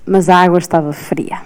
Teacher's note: abriu um pouco mais os As